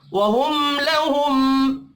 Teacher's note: मीम साकिन के बाद वाव है, इजहार शफ़ी होगा, गुन्ना नहीं होगा। वहुम लहुम, दो मीम साकिन है, दोनों पर इजहार होगा, गुन्ना नहीं होगा